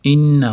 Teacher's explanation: tashdidli nun kelganligi uchun g'unna qilib ushlab turamiz.